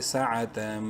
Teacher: سین زبر سا، عین زبر آ، تا میم دو زبر تم، تنوین کے بعد میم ہے اور میم مشدد ہے غنہ کریں گے